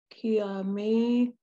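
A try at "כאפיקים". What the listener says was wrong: Ka. There's an A under the first letter. Ka-a. Ka-a. It's a fe. The third letter is a fe, a ph. Ka-a-fi-kim.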